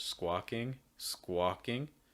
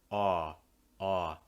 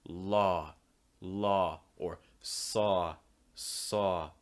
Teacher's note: this is more of the aw sound in American English, squawking, squawking, where what you're doing is you're opening your mouth wide and raising that back of your tongue. Aw, aw. Some other words that have this sound: law, law, or saw, saw.